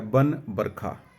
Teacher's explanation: व का उच्चारण ब होता है